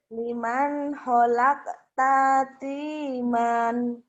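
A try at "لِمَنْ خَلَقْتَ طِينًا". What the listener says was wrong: Bukan Timan ini, Tinan ya. Tinan. Ini nun bukan mim.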